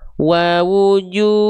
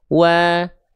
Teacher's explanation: karena dhammahnya ketemu sama wawu sukun, maka 2 kali ayun